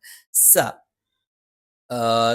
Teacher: സ നാവിന്റെ കൂർത്ത അറ്റത്തിന്റെ മുകൾ ഭാഗം രണ്ട് വരി മുൻപല്ലുകൾക്കിടയിൽ പിന്നിലായിട്ട് വരികയും നാവിന്റെ അറ്റം ചെറുതായി താഴെ മുൻപല്ലിന്റെ പള്ളയിൽ സ്പർശിക്കുകയും ചെയ്യും.